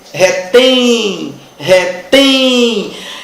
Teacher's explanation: retem é uma oxítona por quê Porque a sílaba tônica é a última retém terminada em e m oxítona terminada em é m eu